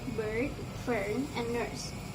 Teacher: The last vowel is the vowel E, which can be heard in the word bird, fern, and nurse. According to the IPA chart, this vowel is mid, central, and neutral